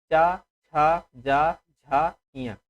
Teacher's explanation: जब इसको बोलेंगे तो जो जीभ होती है वो तालु से टकराती है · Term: चा वर्ग